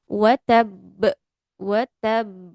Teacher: Di ba-nya agak ditekan di tasydid ya, karena ada ba yang bertasydid kemudian dia berhenti Tabbat waqaf.